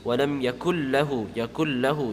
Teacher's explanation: The nun is completely merged into the lam. So it's not even pronounced. And when it's completely merged, there's no gunna. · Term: Idgham nun sakin